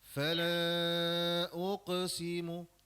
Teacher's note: pada huruf qaf sakinah tu sifat qalqalah sughra tu jangan terlalu kuat ya.